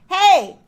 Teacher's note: With a very thick vocal fold mass that is also bright.